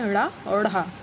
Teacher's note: ये भी मूर्धा से ही बोले जाते हैं क्योंकि इन्हें बोलते समय जीभ एक साथ झटके के साथ नीचे आती है। द्विगुण या उत्क्षिप्त व्यंजन।